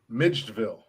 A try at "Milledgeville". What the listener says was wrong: Milledge? You said Midge. Midgeville.